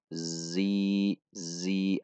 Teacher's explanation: Zi ada gesekan di titik makhraj.